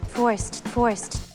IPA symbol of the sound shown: t